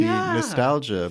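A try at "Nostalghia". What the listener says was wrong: I think that's how you pronounce it. Because there's an H in there. Nostalgia. That's how Tarkovsky would have said it on his Italian sojourn.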